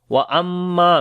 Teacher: میم کے اوپر شد ہے، غنہ کریں گے اور لمبا کریں گے، الف مدہ ہے اور مد منفصل بھی ہے، 3 سے 4 سیکنڈ لمبا کریں گے.